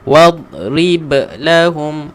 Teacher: Huruf ba memang qalqalah. Tuan-puan perlu baca dengan lantunkan.